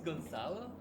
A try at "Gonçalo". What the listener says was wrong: if it's like the Turkish one, it's Che. So it's Gonçalo. similar, because Turkish people also have this, and it's Che.